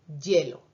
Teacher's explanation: porque está al principio de palabra y está la E ahí, al final lo pronunciamos más como Y